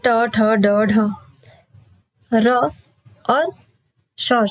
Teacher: ये मूर्धा से बोले जाते हैं। ये मूर्धन्य वर्ण है।